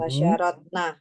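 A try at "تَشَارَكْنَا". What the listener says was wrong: Panjang atau pendek? Oke, panjang. Ya kalau panjang ya bacanya panjang juga. Nanti kalau orang Arab itu kan pakai listening ya. Listeningnya itu masalah itu. Nanti maknanya bisa berubah. Tasyarroda. Nah, minimal panjangan dikit gitu.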